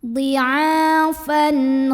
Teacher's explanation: tanwinnya ini dibaca dengan idhar atau jelas bunyi n-nya.